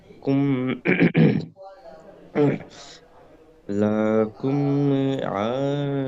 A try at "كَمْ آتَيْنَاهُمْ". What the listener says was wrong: لا، বনি ইসরাইল কাম, কুম না, কাম আতাইনাহুম।